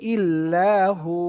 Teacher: যদি আমরা এখানে থেমে যাই তাহলে এই ওয়াওটা সাকিন হবে, এবং পেশের বাম পাশে দেখেন জজমালা ওয়াও হয়ে যাচ্ছে। তাহলে এখানে এক আলিফ টেনে থামতে হবে, যদি আমরা থামি তখন হবে ইল্লাহু।